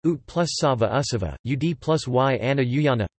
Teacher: t and d may assimilate to a following s or y when a morpheme boundary intervenes